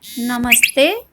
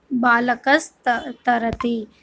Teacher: त जिस उच्चारण स्थान में आता है ना, उसी उच्चारण स्थान का सकार हो जाएगा। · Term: दंते सकार